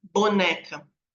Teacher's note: Ó, no P e no B, o P é surdo, ó, porque eu não tenho vibração, mas o B, boneca. O B, ele é sonoro, porque vai ter a vibração da corda.